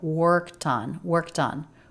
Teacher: The ed ending here is pronounced as a t because the sound before is unvoiced. It's the k. · I do hear that he lightly connects the t to the next vowel.